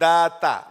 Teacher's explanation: the makhraj of the dal and the ta is the same